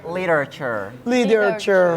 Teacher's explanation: kalau T diapit oleh dua vowel, kita bisa bilang D in American English.